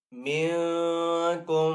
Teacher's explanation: اخفا کا مطلب چھپانا ہوتا ہے، تو یہاں پہ نون کو چھپا کر ادا کریں گے۔